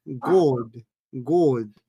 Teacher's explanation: es muy posible de que el God, como ellos lo pronuncian, suene como una O, God. Y yo lo he escuchado.